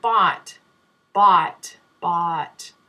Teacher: your tongue is resting on the bottom of your mouth and there's a lot of space in the back of your mouth